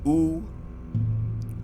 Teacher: the high back rounded